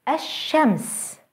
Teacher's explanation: notice how the Sun letter is doubled and how the L Sound is lost